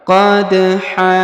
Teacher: huruf da berharakat sukun maka kita pantulkan